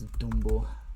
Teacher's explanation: homoorganic nasal assimilation happens here, so it's dumbo. Because I don't want dunvo.